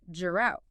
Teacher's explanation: the t becomes a flap sound